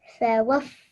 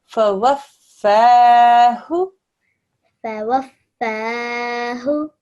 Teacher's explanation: There's a fa, there's a wa, but it joins on to the mushaddad fa, and then you press down, which is exactly what you did. We stretched the fa sound for 2 seconds